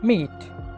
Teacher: അടുത്ത sound ബൈലേബിയൽ, nasal, voiced. Bilabial, both lips are involved. Nasal, soft palate താഴേക്ക് വരികയും air നോസിൽ കൂടി pass ചെയ്യുകയും ചെയ്യുന്നു.